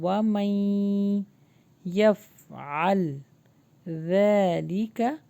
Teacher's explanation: نون skip ہو جائے گا، میم یا سے ملے گا